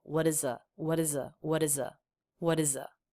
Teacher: the word is has an S that is pronounced as a z and that sound is strengthened because we're linking in to a vowel